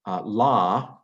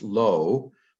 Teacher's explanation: hebrew hebrew underwent a canaanite shift but aramaic didn't and so it's a long a instead of a long o in aramaic